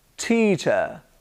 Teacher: The schwa sound is on the R sound at the end of the word, teacher.